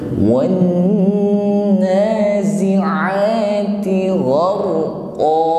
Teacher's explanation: Gharu, huruf ra sukun sebelumnya ada baris atas atau fathah, maka ra-nya dibaca takrir bergetar namun tafkhim, tebal